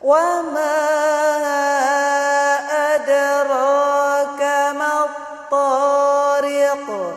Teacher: Ro-nya berharokat fathah adalah ro tafkhim. Cara membacanya dengan mengangkat pangkal lidah.